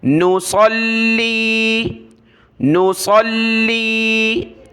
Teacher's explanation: صاد کو موٹا کیا لام کے ساتھ ملایا، لام کو سخت کیا